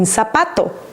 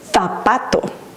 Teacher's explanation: Z makes two sounds. In Latin America, it makes the sound S, as in zapato. But in Spain, they pronounce it like with a TH sound, as in th, and they would say zapato.